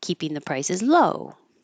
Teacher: if I'm emphasizing low at the end of the sentence I'll go higher and then come down low